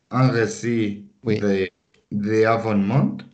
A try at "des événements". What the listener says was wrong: Des événements, avec la liaison. Des événements.